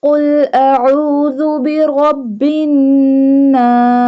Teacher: Qaf pronounced boldly. Qaf pronounced by touching the tongue from the soft part of the palate